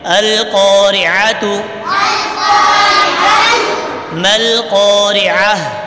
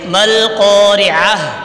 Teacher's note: وقف کریں گے تو گولتا جو ہے یہ ہا بن جائے گی اور اس کو ساکن پڑھیں گے